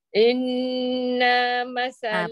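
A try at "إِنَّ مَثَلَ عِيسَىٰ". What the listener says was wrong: Ah, panjang tu. Nah, tak boleh panjang. Terus sambung. Inna masala Isa.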